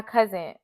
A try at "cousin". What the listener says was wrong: Say cousin. Say it again. Nah, that's like you say it with a T.